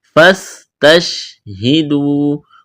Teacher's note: واو مدہ ہے، الف کے برابر کھینچنا ہے